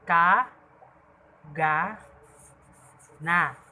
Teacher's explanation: Pang-apat, pangalangala o velar. Ang ibabaw ng punong dila ay dumidikit sa velum o malambot na bahagi ng ngalangala.